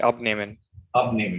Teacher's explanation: So the emphasis is on the prefix because it's a separable verb.